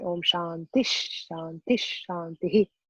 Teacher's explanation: This ha is substituted by a sha. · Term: visarga